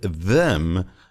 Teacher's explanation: In the word them, the th sound does have a vibration.